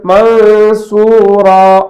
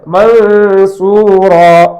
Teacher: நூனுடைய மூக்கந்தண்டு ஒலிதான் இருக்கும். நூனுடைய மகரஜுக்கு நாக்கு போகாது.